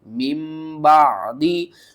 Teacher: با ہوگا تو ہم اس کو میم میں بدل دیں گے، نون کو میم میں بدل دیں گے اور تنوین کی آواز کو بھی میم میں بدل کر پڑھیں گے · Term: اقلاب